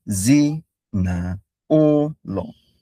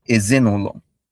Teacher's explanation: So low, high, low, high, low.